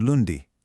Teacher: You can kind of feel a little buzz in your nose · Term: nasal vowels